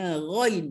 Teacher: Ghain ini dah jadi huruf yang datang daripada kerongkong ataupun halqum